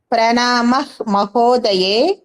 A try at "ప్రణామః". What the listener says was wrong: ప్రణామః విసర్గలు పూర్తిగా పలకండి. ప్రణామః పూర్తిగా పలకండి.